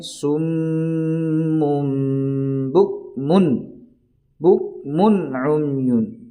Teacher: اظہار ہوگا، یعنی نون کو ظاہر کر کے پڑھیں گے